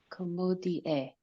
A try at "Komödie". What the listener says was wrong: So you don't have to separate the I from the E so much. You can put like a Y in between. Komödie.